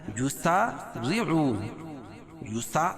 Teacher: الف سے پہلے سین کے اوپر زبر ہے اور را کے نیچے زیر ہے تو را کو باریک پڑھیں گے